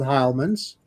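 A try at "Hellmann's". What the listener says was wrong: Now you're saying Heilman's. We say Hellman's.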